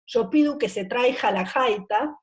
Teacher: El gallego articula la O igual que la U y confunde las consonantes velares, sonoras y sordas.